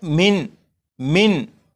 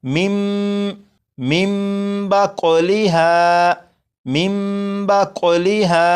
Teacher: इस नून साकिन को मीम से बदलकर गुन्ना करके पढ़ेंगे और ये लिखा हुआ है मिन मिन, लेकिन नून साकिन के बाद बा है तो इस नून को मीम से बदलेंगे और गुन्ना करेंगे और ये बन जाएगा मिम मिम बा कौलिहा मिम बा कौलिहा।